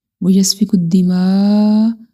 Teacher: بڑی مد ہے، اس کو ہم 5 سیکنڈ تک لمبا کریں گے